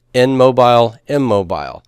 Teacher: the N assimilates to the consonant after it and becomes a copy of it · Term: assimilation